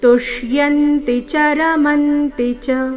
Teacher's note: ಎಲ್ಲಾ ಅಕ್ಷರಗಳು ರಸ್ವ ಆದಕಾರಣ ಮಧ್ಯದಲ್ಲಿ ಯಾವುದೇ ಅಕ್ಷರದ ಮೇಲೆ ದೀರ್ಘಕಾಲದವರೆಗೂ ನಿಲ್ಲಬಾರದು